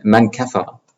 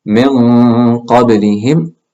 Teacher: the ghunna sound itself, that nasal sound, also becomes thick. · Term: ghunna sounds deep